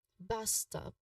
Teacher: pronunciation wise, bus stop, it really emphasize both words equally